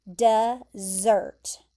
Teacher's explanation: The emphasis is there at the end, dessert.